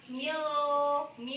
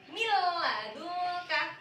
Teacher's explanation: Nun sukunnya kayak tidak terbaca ya jadi tanpa dengung tanpa mendengung Jadi enggak usah Mil Mi enggak usah gitu tapi langsung milladukka